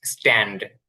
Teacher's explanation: এখানে যে টিটা আছে এটা ঠয়ের মতন হবে না, এটা ট মানে টয়ের মতনই থাকবে।